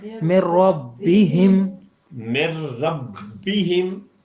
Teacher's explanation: نون کی آواز تک نہیں آئی، یعنی مکمل داخل ہو گیا. پہلے میں لام اور دوسرے میں رے. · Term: ادغام